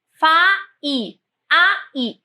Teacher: Na palavra faísca, eu tenho faísca. Eu tenho aqui uma vogal A e tenho a vogal I. Não é semivogal. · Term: hiato